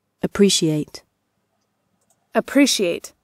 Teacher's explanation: в этом глаголе нам важно то что ударение падает на второй слог